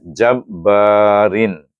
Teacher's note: Jabbarin eh saya tunjukkan panjang sikitlah lebih pada dua. Nak tunjukkan bacaannya dua harakat lebih panjang daripada satu harakat dengan bacaan mad asli